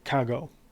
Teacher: you have two vowels that would normally come together and Greek people didn't want to pronounce both of the vowels